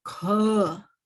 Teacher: Then Kha, it is Mahapran Dhvani. You have to put more breath into it.